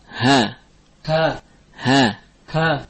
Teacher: Ha tipis ya, bukan ha tapi dengan mustafilah bitarqiq as-saut. Ha keluar dari aqsa al-halq.